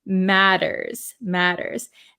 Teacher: So this word, it has T's here. These T's are a flap T in American English. So it sounds like a D sound.